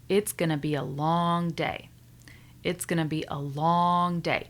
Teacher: Notice I'm stretching long day.